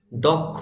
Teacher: খ তার তারপরে উচ্চারণ হবে ওকারের মত দক্ষ যদিও এখানে কিন্তু ওকার নেই কিন্তু ওকারের মত উচ্চারণ করতে হবে